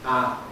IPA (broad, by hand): a